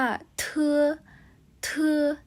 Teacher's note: เพราะฉะนั้นคำว่าเทือนะคะจะมีความลมออกมามากกว่านั่นเอง